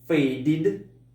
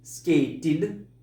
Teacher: Звучание id. Это все те глаголы, которые заканчиваются на т или на д.